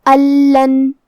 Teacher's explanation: ہم یہ نون کو لام میں ملا کے بغیر غنہ سے لیکن تشدید کے ساتھ یہ حکم کو ادا کریں گے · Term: ادغام بغیر غنہ